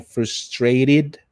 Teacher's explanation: in America, this T sounds like a small R, right? Or a little R there.